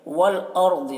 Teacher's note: वल-अर्ज़ि रा को पुर पढ़ेंगे, राय साकिना से पहले ज़बर है